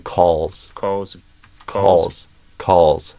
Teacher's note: the dark L kind of pulls on the vowel, like they're connected